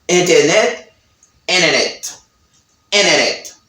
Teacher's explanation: you have NT plus a vowel, but the letter T doesn't sound in American accent